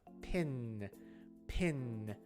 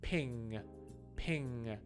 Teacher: the middle of the tongue versus the back of the tongue pin is in the middle of the tongue and ping is in the back of the tongue · the N sound is closer to the front of the mouth. Pin, pin. My tongue is like almost between my teeth.